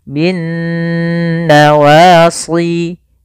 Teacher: tertulis tapi tidak dibaca lamnya sehingga langsung diidgamkan dimasukkan ke huruf nun sehingga nunnya berharakat tasydid Kemudian pada lafal Nun sendiri ini ada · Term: alif lam syamsiyah